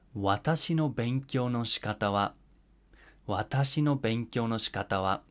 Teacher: you do go up after the first syllable, but then these words themselves are going to be flat. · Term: flat pitch